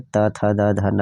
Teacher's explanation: दंत्य, दांत से उच्चारित होने वाले, त, थ, द, ध, न, ये त वर्ग हो गया, और ल और स, ये भी जो है दांत जो है इसमें उच्चारण स्थान में आता है।